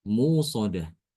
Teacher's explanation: Jadi hamzahnya diganti dengan wawu sukun sehingga di situ ada mad thobi'i. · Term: ibdal